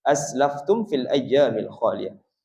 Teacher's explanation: Aslaftum mim mati bertemu fa izhar syafawi di situ